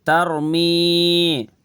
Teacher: ربہم بہم، آگے تارا زبر تر، میم یا زیر می، ترمی، یہاں پہ یا کے اوپر جزم، اس سے پہلے زیر ہے تو یا مدہ یہ کھینچنا